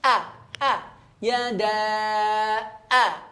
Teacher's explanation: Nah, ketika masuk hamzah dia sudah masuk kepada tenggorokan ya, pangkal tenggorokan.